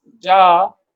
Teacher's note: Similarly, jim, alif, ja. So here alif indicates that the sound of ja should be stretched or prolonged